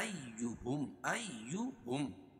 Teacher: حمزہ کو یا میں سختی سے ملائیں گے کیونکہ یا کے اوپر تشدید ہے، تشدید والا حرف سختی کے ساتھ 2 مرتبہ پڑھا جاتا ہے.